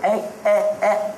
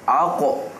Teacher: Kalau adik sebut ek, ek, ek. Lidah tu letak. Tapi kalau aku, lidah tu terangkat.